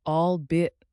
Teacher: albeit with the stress on the second syllable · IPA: /ɔːlˈbiː.ɪt/